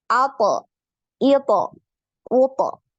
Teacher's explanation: Pangkal lidah dan permukaan lidahnya naik. Jadi suaranya tebal, kemudian bulat ya, bulat. · Selain pangkal lidahnya ini naik, ya, untuk huruf to ini, permukaan lidah juga naik. Makanya dia ini termasuk huruf yang paling tebal, ya.